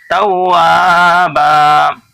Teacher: واو کے اوپر تشدید ہے اس لیے اس کو دو بار پڑھے توا، اور واو الف زبر وا کھینچ رہے ہیں، اس کو کیوں کھینچ رہے ہیں کہ الف سے پہلے زبر ہے